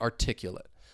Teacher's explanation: again I'm stressing the second syllable